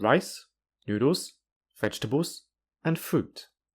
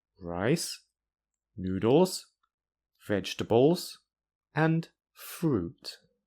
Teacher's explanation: The second part of this sentence has 3 rises and 1 fall, and in each word, the pitch rises or falls within the word. If I say each word slowly, it is very easy to hear the pitch change.